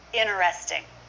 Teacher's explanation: chance you're not going to hear that T at all interesting it's common to drop a T after n · It's common to drop a T after N, so that's what happens here.